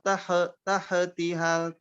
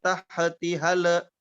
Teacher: Jangan sampai ha dan lam sukunnya mantul.